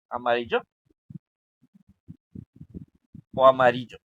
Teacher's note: Ri es la penúltima sílaba y es la más fuerte